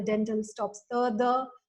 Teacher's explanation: the interdental fricatives are substituted by the dental stops ta, da. But in some cases, in some Konkani speakers, they also realize the aspirated stops here, but not, that was not found in majority of speakers' speech.